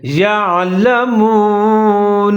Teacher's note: عین ساکن ہے، ملا کر پڑھیں گے دونوں کو، اور عین کو ظاہر کر کے پڑھیں گے